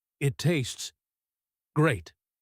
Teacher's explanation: That pause tells Laura that Kevin is lying. The word great is not stressed with excitement. It is spoken quietly, almost like a question. He is saying it tastes great, but his intonation is screaming that it tastes terrible.